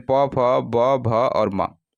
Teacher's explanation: वहीं ओष्ठ ध्वनियों की अगर बात करें तो ओष्ठ ध्वनि में आपका जो है इसका उच्चारण जो है ओष्ठ से होता है, यानी होठों के हेल्प से होता है।